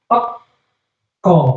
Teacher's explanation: Ok, ko, sama-sama. Ketika bunyi ok itu pangkal lidahnya terangkat.